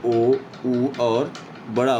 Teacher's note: जैसे ओ, ऊ और बड़ा ऊ बोलोगे तो आपके जो होंठ हैं वो उनकी आकृति जो है वो वृत्तमुखी गोलाकार हो जा रहे हैं